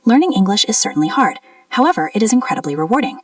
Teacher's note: how the voice goes up at the connector and down at the comma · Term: intonation